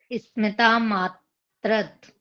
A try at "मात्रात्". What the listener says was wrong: मात्रात आ की मात्रा है।